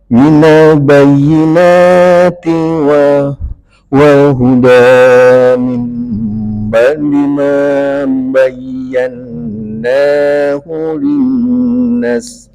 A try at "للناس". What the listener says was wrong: linnas panjangin Pak.